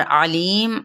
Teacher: आइन को वस्ते खल्क से अदा करते हुए